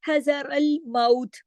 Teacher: हज़रल मौत, है रल, रा को मोटा पढ़ेंगे इसके जबर की वजह से। हजर अल माउथ, माउथ, इसको मौत नहीं, उर्दू की तरह नहीं, माउथ, माउ।